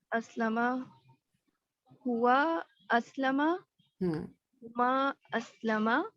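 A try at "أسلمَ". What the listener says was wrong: اس کو تھوڑا پھر لمبا کریں نا 2 حرکات تاکہ ڈفرنس پتہ چلے.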